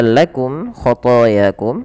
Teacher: Kemudian pelafal lakum khatakum ada mim mati bertemu k. Maka ini kita namakan dengan bacaan izhar syafawi. Jelas suara mimnya.